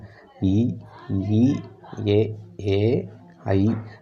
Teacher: வாய் திறக்கும் முயற்சியுடன் நாக்கின் அடி ஓரமானது மேல்வாய் பல்லை பொருந்தும் முயற்சியினால் பிறக்கின்றன